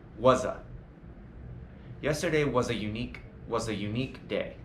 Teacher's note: how the S or really the Z sound of was not was but was connects to the following indefinite article a